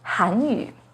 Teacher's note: The pinyin and tone for Hanyu has a 2nd rising tone on Han, Hanyu.